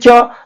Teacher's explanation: बोलेंगे च तो जीभ के ऊपर एक तालू है उसमें बोलेंगे तो जीभ सटेगा